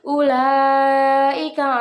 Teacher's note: terdapat hukum bacaan mad jaiz mutasil yang dibaca panjang 4 atau 5 harokat